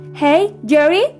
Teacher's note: It is mostly a falling intonation, like a statement.